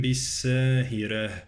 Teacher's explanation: والراء مرققة في كلمة ساهرة